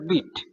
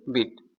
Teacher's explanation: প্রথম বিটটা হচ্ছে কি দ্রুত হয়েছে, পরের বিটটা উচ্চারণ করতে একটু সময় নিয়েছে, মানে একটু বেশি চাপ পড়েছে।